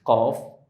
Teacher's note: Pangkal lidah paling belakang bertemu langit-langit atas bagian yang lunak. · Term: huruf qaf